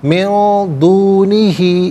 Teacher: موعد لن یجدو من دونہ، نون ساکن کے بعد دال حرف اخفاء ہے تو نون ساکن کو اخفاء کے ساتھ پڑھیں گے، اخفاء کہتے ہیں ناک میں آواز لے جا کر گنگنانا۔